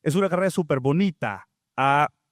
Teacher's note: luego de hacer ese alargamiento de la A, ella cambia su entonación y lo vemos reflejado en el grupo fónico que tiene un tonema ascendente y eso indica que hay una nueva unidad comunicativa después haber alargado la última vocal de el segmento anterior.